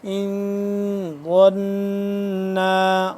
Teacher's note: اس پہ ہم اخفا کریں گے، یعنی کہ ان آواز کو اس کے مخرج کے اندر چھپانا ہے، غنہ کرنا ہے اور آواز کو مخرج کے اندر چھپانا ہے، جیسے حمزہ نون زیر ان، ظن، جی عین الف مد زبر آ، اس کو لمبا بھی 2 سے 3 الف کے برابر یہ والی مد لمبا ہوتی ہے، ٹھیک ہے۔